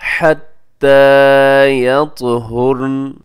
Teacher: ता कलकला कीजिएगा, ता साकिन है, ता कलकला है और इसी तरह आखिर में लिखा हुआ है नून के ऊपर ज़बर है, लेकिन हम जब वक़फ़ करते हैं तो हम उसको साकिन कर देंगे।